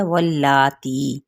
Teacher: اب لام پہ کھڑا زبر ہے اور اس پہ وہ بھی ایک الف یا 2 حرکات لمبا کریں گے